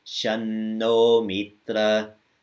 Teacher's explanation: the Anuswaras, the M's with dots over them, always are pronounced from the same place in your mouth that the next letter comes from